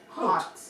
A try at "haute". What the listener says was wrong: Oat. You don't even pronounce the H. It's oat. Oat. oat.